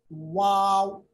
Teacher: वाव पढ़ते वक्त दोनों होंठ साइड में मिलते हैं, बीच में खाली हिस्सा रहता है